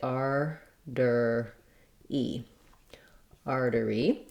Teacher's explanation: this t in the middle uh sounds more like a d in american english · We have first syllable stress, and so my R syllable is longer and my dury syllables are shorter. · This letters AR say the same sounds as in the word R, so that's the R diphthong. And then this T in the middle sounds more like a D in American English, so I would say artery, artery. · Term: flap